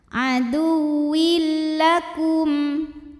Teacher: Karena ada tanwin kasrah menghadapi huruf lam, maka tanwinnya masukkan ke lam, aduwil, tanpa ditahan, tanpa didengungkan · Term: idgham bila gunnah